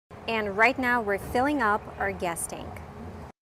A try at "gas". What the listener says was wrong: I think of this word, guess. It has the short S sound like bed and red. Guess. But she means gas. The sound is different. We use the ah sound like black cat. It's more open. The tongue is down in the front and up in the back.